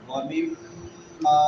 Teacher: میم مشدد آ گئی ہے تو یہاں پہ کیا ہوگا؟ غنہ ہوگا. ومما اور میم کے بعد الف مدہ ہے.